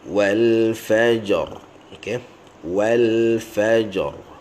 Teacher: walaupun ra tu baris bawah wal fajri, tetapi apabila kita berhenti, maka ra tu jadi mati. Bila ra tu jadi mati, tebal atau nipis, maka ia bergantung pada baris sebelum ra. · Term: ra jadi tebal